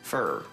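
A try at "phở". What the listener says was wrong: Lengthen a little bit.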